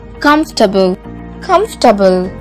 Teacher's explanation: this word, just like vegetable, has an extra vowel that we don't need to pronounce